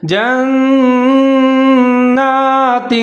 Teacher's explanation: ان لهم۔ آگے ہے جنات تجری، جیم کے اوپر زبر ہے، نون مشدد ہے، یہاں ادغام کریں گے غننے کے ساتھ ، اور نون کے اوپر کھڑا زبر ہے، تھوڑا سا اس · نون کے اوپر کھڑا زبر ہے، تھوڑا سا اس کو لمبا پڑھیں گے